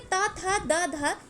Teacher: तो ये दंत से यानी कि दांत से बोले जाते हैं।